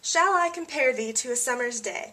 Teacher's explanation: you can see we have a series of unstressed and stressed syllables, and we have 5 stresses, which we already know would make that iambic pentameter.